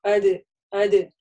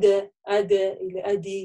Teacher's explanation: При этом не нужно чрезмерно «дя» там говорить, как-то уже смягчать согласовками ее. На сукуне она у нас имеет «калькалю», такой быстрый звук